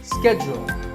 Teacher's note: that it's said differently in the UK and in the US in American English this is schedule the first syllable is sket and the second is to schedule in British English it can